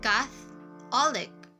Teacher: in the word Catholic, the first syllable is stressed